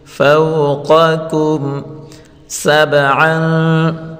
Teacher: میم ساکن کے بعد حروف سین ہے، سین حروف اظہار کا ہے تو اس میم کو ہم ظاہر کر کے پڑھیں گے۔